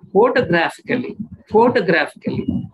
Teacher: when we say photographically we stress on the first syllable and also third syllable